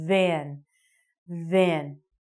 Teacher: with the voiced sound, you're going to want to stick your teeth out, but you're going to vibrate your vocal cords and say van.